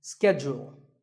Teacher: In American English, this is schedule. The first syllable is ske and the second is jewel, schedule. In British English, it can be both schedule or schedule.